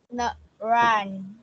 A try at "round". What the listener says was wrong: Nó không có âm S đúng không? Thì mình là round.